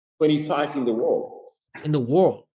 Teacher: You see how he's not able to pronounce the dark L and D.